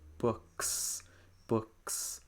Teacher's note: The S is voiceless, and also the K is voiceless as well. So that's going to sound like books.